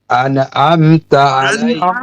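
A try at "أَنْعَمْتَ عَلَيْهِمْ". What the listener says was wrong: কলকলা হবে না এই আনা আনা এরকম না আন আম আন আম আন আম দেখুন কি লেখা আছে আনা লেখা আছে কি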